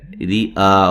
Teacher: را کو باریک پڑھیں گے، را کے نیچے زیر ہے ، اور آ پہ جو مد ہے یہ مد واجب ہے،